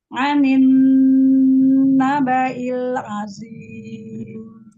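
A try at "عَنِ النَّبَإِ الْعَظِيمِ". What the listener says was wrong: Pangkal lagi, angkat lagi zo-nya. Azim.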